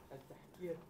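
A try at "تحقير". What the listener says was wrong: At-tahqir. Tahqir. Le kaf, il n'y a pas de kaf. Qaf. Tahqir. Tahqir.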